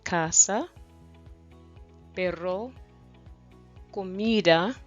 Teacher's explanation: words with stress on the second to last syllable